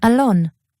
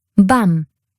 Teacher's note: This vowel is similar to Hebrew's A, as in dog or father. The Hebrew vowel, though, is a bit more forward in your mouth, so your tongue is going to be about halfway towards the American vowel A.